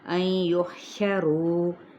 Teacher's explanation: یہاں پہ ادغام مع الغنہ کا قاعدہ ہے، نون ساکن کے بعد یا متحرک ہے اور رو کو ہم 4 حرکت کھینچیں گے.